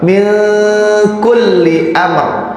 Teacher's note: Ini nun yang disukun sebetulnya nih. Nun sukun bertemu dengan kaf, maka dibacanya ikhfa.